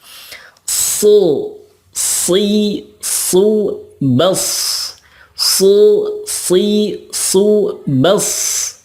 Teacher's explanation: sod itu sama makhrajnya dengan sin, yakni ujung lidah dengan gigi seri bawah, tetapi pangkal lidahnya diangkat. Su, si, su, bas.